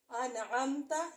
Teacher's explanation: یہاں پہ ہم نون کو ظاہر کریں گے، غنہ نہیں کریں گے۔ یہ ہو گئی نون ساکن کی مثال۔